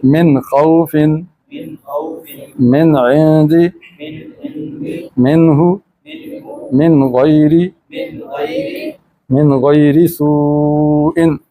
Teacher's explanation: نون کو ظاہر کر کے پڑھیں گے، ناک سے چھپا کر نہیں پڑھیں گے۔ ایک ہوتا ہے ظاہر کرنا، ایک ہے چھپانا، تو ان 6 صورتوں میں یہ چھپے گی نہیں ناک سے، بلکہ یہ ظاہر ہو کے پڑھی جائے گی۔ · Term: اظہار